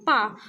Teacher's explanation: पा शब्द का उच्चारण स्थान ओष्ठ से है